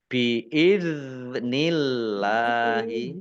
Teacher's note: dua harakat biidni dalal sukun ya bukan Qalqalah jangan dipantulkan biidnillahi Allahnya dibaca tipis karena harakat di depannya kasrh